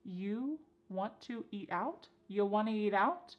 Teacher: And then we have reduced want to to become wanna to. This is a common reduction in English.